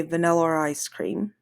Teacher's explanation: also there's an intrusive R. So, for example, if someone was saying a word that ended in a vowel and then began in a vowel, the next word like vanilla ice cream, um, they might say vanilla ice cream.